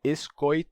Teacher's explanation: maior parte da população lá pronuncia com Oi dizem es coit o ditongo Ui se abriu para Oi